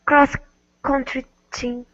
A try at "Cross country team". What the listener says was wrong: Okay, very good.